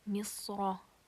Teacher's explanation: This is easy because it has a fatha. The ra here has a fatha, so when I connect it, it will be pronounced as a heavy letter.